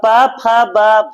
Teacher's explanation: प्रयास करेंगे तो जीव आपका दंत में स्पर्श होता है और पफ ब आप बोलेंगे तो उस पफ का उच्चारण में आपका ओठ स्पर्श होता है